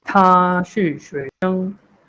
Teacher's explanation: there is a puff sound after T which makes the pronunciation tha, not ta